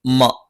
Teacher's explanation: മ രണ്ടു ചുണ്ടും തുല്യമായി അടച്ചുവെക്കണം